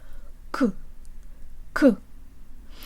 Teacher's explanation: It's where we say K sounds, closer to the front of the mouth. Say the Russian Ka sound and feel that the tongue is releasing air close to the soft palate, or the soft portion of the roof of your mouth.